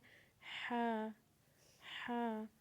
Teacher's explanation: ہا کی آواز بھی آپ نے حلق سے نکالنی ہے، اور بالکل آرام سے نکالنی ہے، نرمی سے نکالنی ہے. ہا.